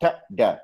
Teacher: ट ड को टच कर बोलते हुए हमारी जुबान दांत के पीछे एक जो हार्ड रिज है उसे टच हो रही है. So these are called alveolar sounds.